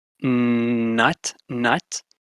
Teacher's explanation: you just redirect the airflow to your nostrils. The air goes out your nose. You lower your velum. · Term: nasals